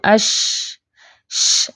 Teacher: اس کی آواز اپنے مخرج میں پھیل جاتی ہے، اسپرینگ ساؤنڈ ہوتی ہے اس کی. یہ جو اش، ش، یہ جو ش، یہ اسپرینگ ساؤنڈ ہے اس کی، اور یہ اس کی خاص پہچان ہے.